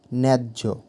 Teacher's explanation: এখানে ন্যা অক্ষরের ওপরে শ্বাসাঘাত হচ্ছে অর্থাৎ উচ্চারণের সময় বেশি জোর দেওয়া হচ্ছে